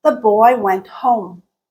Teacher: Yes, there are little inflections in between, but at the end of the utterance, there's a very marked dip. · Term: falling intonation